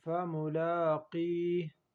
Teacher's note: وقف کی صورت میں ہا کے زیر کو ہٹا کے پڑھیں گے اور قاف کو پر پڑھیں گے